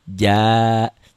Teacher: Ini panjangnya 2 harokat atau 1 alif atau 2 ketukan. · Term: matobi'i